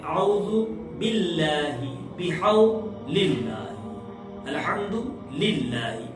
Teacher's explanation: یہاں پہ اللہ کے لام کو پتلا پڑھا جائے گا چونکہ اس کے پہلے زیر آ رہا ہے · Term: لام پتلا